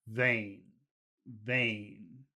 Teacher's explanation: we should pronounce this word vain in a low tone